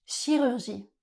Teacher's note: Dans ce mot, les lettres C et H font le son /ʃ/.